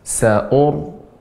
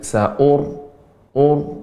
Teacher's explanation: Ra yang sukun sebelumnya dhammah, sa'ur ini baca dengan tebal.